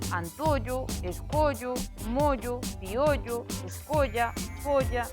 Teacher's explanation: As acabadas en ollo, olla, sempre pechadas tamén.